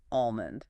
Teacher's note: That middle consonant just vanishes in fluent native speech. If you pronounce the L, you are signaling that you are reading the word, not speaking it. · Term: silent L